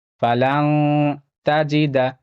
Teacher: یہاں پہ نون ساکن کا اخفا ہوگا، نون ساکن کے بعد تا ہے، تا حروف اخفا میں سے ہے